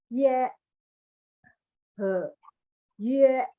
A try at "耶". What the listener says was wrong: Oke, belakangnya kurang tekan Bu ya. Jadi Ibu boleh ikutin saya. Ye. Nah, iya, jadi E-nya itu yang ditekan. Kalau saya lihat Ibu tekan depan gitu ya.